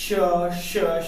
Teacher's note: तो जो वायु है यह रगड़ खाते हुए मुख से बाहर निकल रही है · कि जिनका उच्चारण करते समय मुख में कुछ संघर्ष का भाव, अर्थात जब वायु निकली मुख से उच्चारण करते समय तो वो कुछ संघर्ष करते हुए, रगड़ खाते हुए जब वायु बाहर निकलती है तो वह वर्ण क्या कहलाते हैं? उष्म। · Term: उष्म वर्ण